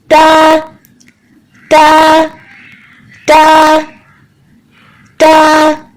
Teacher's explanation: زبان کی نوک کے اوپر والے حصے کو اوپر کی دو دانت کی جڑ سے ملا کے ادا کریں